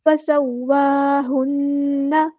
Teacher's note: الى السماء فسواہن یہاں پہ سین کی سیٹی واضح کرنی ہے، واو پہ کھڑا زبر ہے تو مد اصلی ہوگی یعنی مد طبعی تو ایک الف کے برابر لمبا کرنا ہے ، فسواہن نہیں پڑھنا اسے، فسواہن ہاں کو سمپل ادا کرنا · ہاں کو سمپل ادا کرنا ہے اور نون پہ غنہ زمانی ہو رہا ہے تو ایک الف کے برابر رکنا ہے